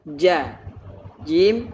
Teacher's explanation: Jadi maksudnya huruf Jim adalah bagian tengah lidah dengan langit-langit di atasnya